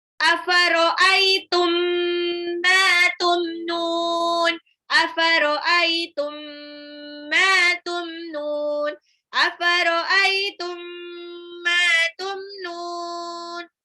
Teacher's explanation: Afaro'aitum mim sukun ketemu mim itu idgham mimi.